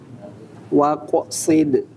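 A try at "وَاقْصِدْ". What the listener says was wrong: Waqo. Waqo. Jangan diputus. Bukan waqo. Bukan waqo. Tapi waqo sid.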